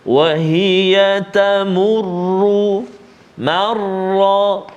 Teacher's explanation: Kedua-dua tempat ini, kedua-dua huruf ra ini kita baca dengan tafkhim, tebal. Kenapa? Sebab baris atas.